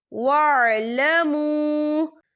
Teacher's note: यहाँ पे वाव मद्दा हो रहा है, वाव साकिन से पहले पेश है और इस पर छोटी सी मद भी है, तो हम इसे चार हरकत के बराबर खींच के पढ़ेंगे